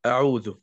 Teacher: bukan e tapi a. Mulutnya dibuka a. Lebar. A, bukan e tapi a.